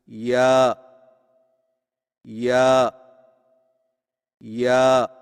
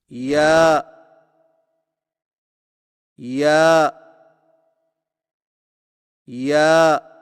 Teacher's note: یا کی ادائیگی میں زبان کے درمیان کو تالو کی طرف بلند کرتے ہوئے باریک آواز میں پڑھیں، یعنی یا یا یا۔